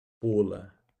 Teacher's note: Em ampola, família, o M não tem som, ó.